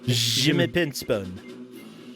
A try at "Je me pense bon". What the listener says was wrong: What are you doing? No, you're just adding way too much like nose to it. It's just je me pense bon.